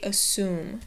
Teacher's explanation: the U in there does not make a U sound, but an oo sound